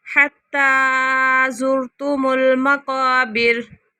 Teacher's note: تا کے اوپر کھڑی زبر ہے اس لیے اسے لمبا کر رہے ہیں